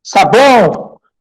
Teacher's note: Lembrando que o tio ele não é acento, é um sinal de nasalização. Sabão, você percebe que o som sai um pouco pelo nariz. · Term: fonema nasal